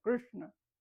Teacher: es hacia atrás, es retroflexa